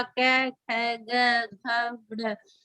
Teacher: इनका हम उच्चारण करेंगे तो हमारी जीभ कंठ को छुएगी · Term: कै वर्ग